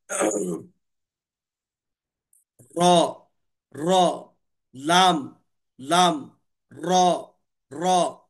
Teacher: ان کی ادائی کے وقت آواز نوک زبان کی طرف پلٹتی ہے، اور را کی ادائی کے وقت نوک نوک زبان کی پشت کی طرف آواز جو ہے پلٹ جاتی۔ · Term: حروف منحرفہ